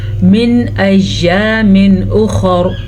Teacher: خا کو پر پڑھیں گے، وقف کریں یا نہ کریں، دونوں صورتوں میں را کو بھی پر پڑھیں گے